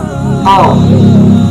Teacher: Makhorijul huruf qaf terletak pada pangkal lidah dan langit-langit. Sedangkan sifatul huruf qaf terdiri dari 6 sifat, yaitu jahr, nafas ditahan.